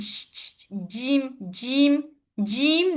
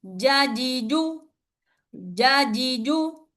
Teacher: Don't give air when you pronounce the jim. In order to pronounce this jim properly, what you have to do, shrink your tongue inside, then hit up.